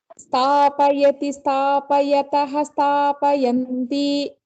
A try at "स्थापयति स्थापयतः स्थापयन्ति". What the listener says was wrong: समीचीनम्. अग्रे.